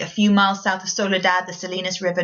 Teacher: he's using lots of sibilants there, the repetition of the S sound to make it sound tranquil and flowing